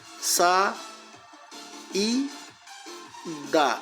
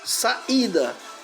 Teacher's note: O i sozinho na sílaba, ele é a sílaba tônica. Então ele recebe acento. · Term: hiato de i